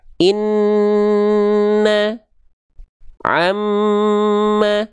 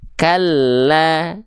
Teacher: Ditahan bukan hanya tekan karena mereka punya dengung dulu. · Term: gunnah